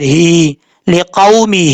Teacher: میم کے بعد ہا ہے، کھڑا زیر ہے ہا کے نیچے، اس کو ایک الف کی مقدار لمبا کر کے پڑھا جائے گا